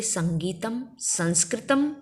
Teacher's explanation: अनुस्वार का उच्चारण स्थान नाक होता है, नाक से बोला जाता है